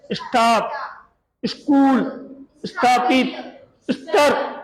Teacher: स के जस्ट बाद में स्पर्श वर्ण आए तो अपन ई या अ, यानी थोड़ा सा स्वर अपन अंदर से उसकी आवाज आएगी